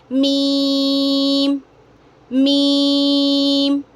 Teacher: दोनों होंठों के खुश्क हिस्से से मीम अदा होता है